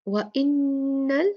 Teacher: نون مشددہ 2 count غنہ